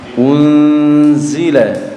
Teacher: Di situ ada nun sukun bertemu huruf zai. Maka cara membacanya dibaca samar dan mendengung. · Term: ikhfa hakiki